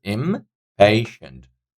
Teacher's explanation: So second syllable is having the stress on here.